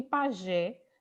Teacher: E você, saber, por exemplo, que pajé, Gé, é a sílaba mais forte da palavra. Ah, Gé é a sílaba mais forte, então ela é oxítona.